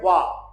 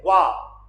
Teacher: वाह जो बोला जाता है वो दंत और ओष्ठ 2 वर्णों से बोला जाता है। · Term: दंत ओष्ठ